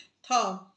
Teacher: महाप्राण दंत्य व्यंजन ध्वनि